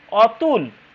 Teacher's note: অন্তমধ্য যুগে অকারের সংবৃত উচ্চারণ, মানে ওকারের মতো, পূর্ণভাবে প্রতিষ্ঠিত হয়েছে। যেমন আমরা বলছি অতুল, আমরা অনেকে অতুল বলি না, অতুল।